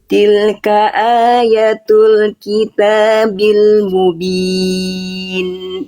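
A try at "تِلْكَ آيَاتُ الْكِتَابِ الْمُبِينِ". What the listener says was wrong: Tilka ayatul Ianya berapa harokat Bunda? 2 ya harusnya, karena fathah tegak sama kayak Hamzah tuh. Fathah tegak A-nya bagus 2 harokat. Ianya juga 2 harokat sama. Iya, tadi ianya kecepatan.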